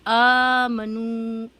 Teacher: کھڑا زبر برابر ہوتا ہے الف مدہ کے، اس کو ایک الف کے برابر کھینچ کر پڑھیں